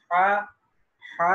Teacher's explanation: ہا جو ہے یہ حلق کے درمیانی حصے سے، یعنی جسے ہم گلا بھی کہتے ہیں، وہاں سے نکلتا ہے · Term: وسط حلق